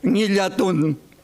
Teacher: la nasal dorso palatal o velar bastante frecuente en idioma mapuche